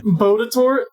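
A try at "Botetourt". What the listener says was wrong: Ooh, close. So you don't pronounce the last R, so it's Bodatot.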